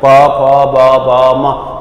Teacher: ઓષ્ઠ્ય, હોડ ભેગા થાય છે